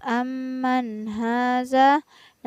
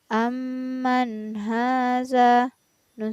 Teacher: anu full Nah perhatikan pada awal ayat pada lafaz amanha Zahra di sini ada nun sukun yang bertemu dengan huruf H maka nun sukun nya harus dibaca jelas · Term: hukum bacaan izhar